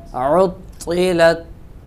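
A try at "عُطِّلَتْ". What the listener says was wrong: ता को पुर करेंगे।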